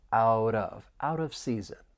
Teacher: It's just an example, but let's go ahead and talk about pronunciation because the final T in out, you're going to hear me pronounce it as a flap T because it comes between two vowel sounds and then I can link that flap T with the vowel sound in of · the final T in out, you're going to hear me pronounce it as a flap T because it comes between two vowel sounds and then I can link that flap T with the vowel sound in of out of out of season.